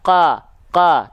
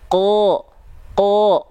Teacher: huruf qof kan dia enggak dibaca qa qa tapi qo qo vokal o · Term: huruf-huruf tebal